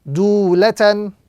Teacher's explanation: Ta, tanwin, fatha, lan. Dulatan, with the prolongation and the emphasis on the first letter because of the waw madda that appears in this particular word, dulatan.